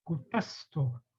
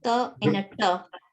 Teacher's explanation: But when it's the hard T, which is with the dot underneath, there our tongue, it's a palatal sound, where the tongue will touch the top of the palate